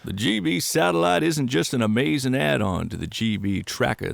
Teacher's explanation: I did another pass that was like more of a vocal fry sound